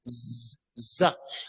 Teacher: Vous voyez, comme le Z en français, ça siffle.